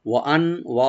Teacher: ওয়ান, ওয়া open থাকবে, আর নুন সাকিন এখানে আমরা একফা করব।